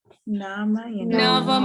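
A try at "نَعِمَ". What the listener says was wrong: it's not Nawama. It's Navima. It's on the pattern of Samia.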